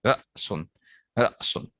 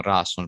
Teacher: حمزہ کو جب آپ پڑھتے ہیں تو آپ جھٹکے کے ساتھ پڑھتے ہیں، حمزہ جھٹکا کی آواز دیتا ہے